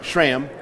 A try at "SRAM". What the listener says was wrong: SRAM. There's no H in that word. SRAM.